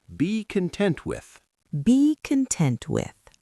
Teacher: The stress is on content.